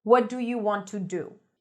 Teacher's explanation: Every syllable receives the same beat. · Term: syllable timed